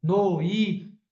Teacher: um de tongo noite e um de tongo decrescente ó noi O som tá descendo e fica fraco